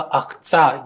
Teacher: Но в тех заднерядных словах и словоформах, когда после «к» следует «т», например, или «с», или «ч», мы имеем формы типа «ахца» – «деньги». То есть в начале «к» перешел в «х» перед согласным